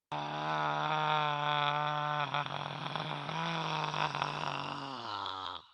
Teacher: i would describe that voice as gravelly as pressed as harsh and certainly soft and not with a lot of endurance